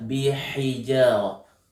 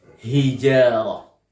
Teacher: Jadi huruf ha yang keluar melalui rongga tenggorokan. Bukan huruf ha yang besar melalui rongga dada. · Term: ha kecil